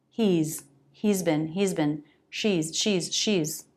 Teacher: The pronunciation of the has contraction with he and she, it's pronounced as a Z.